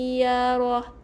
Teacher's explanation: Kalau kita sambung sini, tapi kita berhenti, kita matikan dengan bunyi ha, bunyi h